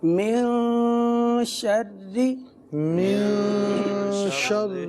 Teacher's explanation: نون پر گنہ کریں گے، اکفا یعنی گنہ کریں گے، اور گنہ کی مقدار ایک الف کے برابر ہے